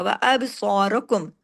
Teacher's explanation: बा पे कलकला करें। अब सोद को हैवी करें। र को हैवी करें।